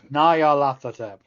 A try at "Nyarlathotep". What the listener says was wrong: The TH isn't a sound. The Nyarlath was his name, and the Hotep was added afterwards.